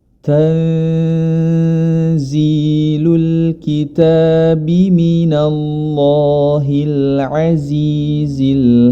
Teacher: nun sukun bertemu dengan huruf Zai atau Za maka hukum bacaannya adalah ikhfa atau disamarkan